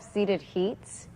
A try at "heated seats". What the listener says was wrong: Heated seats. You said seated seats.